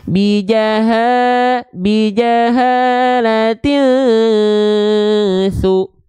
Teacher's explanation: Cara bacanya gimana? Samarkan dan dengungkan 2 harokat. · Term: ikhfa